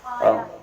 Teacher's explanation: الف مفخمہ یعنی وہ الف جو پر پڑھا جاتا ہے